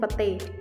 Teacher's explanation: Perubahan-perubahan ini terjadi pada bunyi vokal rangkap ai ke vokal tunggal e. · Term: monoftongisasi